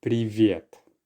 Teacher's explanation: the y there merges with the preceding consonant, making it softer